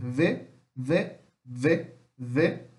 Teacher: é um V quase para um B. V, V, V, V, tá? Que é labial ou lábio dental